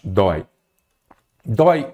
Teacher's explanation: Porque aqui eu tenho um ditongo aberto, oi.